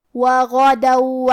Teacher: کلمت وغدوا میں غین کی ادائیگی حلق کے اوپر والی حصے سے ہے